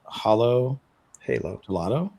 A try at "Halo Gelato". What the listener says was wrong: It's not Halo. It's like Hollow.